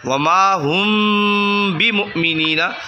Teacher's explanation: میم ساکن کے بعد با آ جائے تو با آ گیا، تو یہاں غنہ کیا جائے گا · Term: اخفاء شفوی